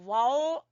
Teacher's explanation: होंठों को गोल करके अदा किया जाता है। वाव जब हम पढ़ेंगे वाव तो होंठों को गोल करेंगे।